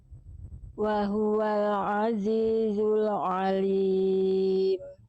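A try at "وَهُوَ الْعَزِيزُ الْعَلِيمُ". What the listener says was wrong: Ainnya jangan tebal, jangan alim tapi a Ainnya tadi masih nuansanya nuansa tebal ya. Makanya harus tahu nih apakah ain itu huruf tebal huruf tipis. Nah, ain itu termasuk ke dalam huruf yang tarkik, di buku ada semuanya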